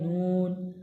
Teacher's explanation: নুন জীবের আগা এবং তার বরাবর উপরে তালুর সাথে লাগিয়ে উচ্চারিত হয় নুন।